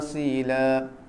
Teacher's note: Sod dia ada sifat sofira, macam siulan sikit.